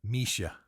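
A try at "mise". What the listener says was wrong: now make it a little shorter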